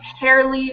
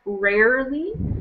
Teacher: the beginning R sound kind of gets turned into an H sound, so it sounds a little more like hairly rather than rarely.